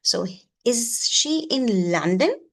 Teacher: a yes and no question, then you have the rising pitch